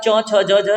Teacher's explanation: आपका जीभ जाके तलवे पे टच होता है तो ये तालव्य हो जाती हैं